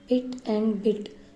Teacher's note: initial consonant sound of English word पिट एंड बिट, these are bilabial plosives